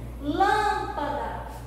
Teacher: O lã é a sílaba tônica da palavra lâmpada.